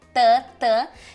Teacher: dental então é quando a tua língua encosta no teu dente mesmo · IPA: t d